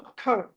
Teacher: ఖ అన్నది మహాప్రాణం ఒత్తి పలకాలి